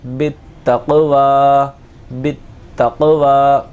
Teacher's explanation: بالتق، واو کھڑا زبر وا، بالتقوا، بالتقوا، بالتقوا. قاف کی آواز کو جلدی سے پڑھا جائے گا اور واو کو ایک الف کے برابر کھینچ کر پڑھا جائے گا